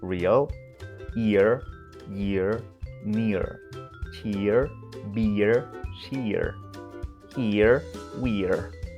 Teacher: for American English, you omit the final schwa and include a soft rhotic ending